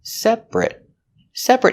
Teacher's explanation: Separate with the it sound. Because when you say separate, the stress is on the first syllable only, and that syllable ate is not stressed. So we change the pronunciation to it.